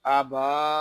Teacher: با کو ایک الف تک کھینچ کر پڑھیں گے